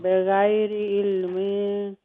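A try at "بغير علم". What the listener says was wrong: ना बगैर इल्मिन क्यों कह रहे बगैर इल्म करके कर दीजिए वक्त और इसके अलावा अहवाअहुम मीम साकिन के बाद बा है तो यहाँ पर मीम साकिन नहीं लेकिन मैं ख़त्म तो कर लूँ पहले मीम साकिन का इख्फा शफवी है यहाँ पे,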